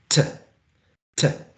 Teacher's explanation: So we have to use this diacritic mark, showing that it's this plosive and voiceless T is aspirated, right? Aspirated is T, T.